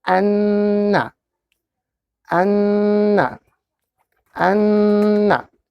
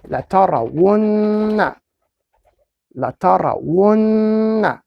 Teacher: for the special letters, Noon and Meem Mushaddad, then we have to do something is called Ghunna. Ghunna or nasal sound.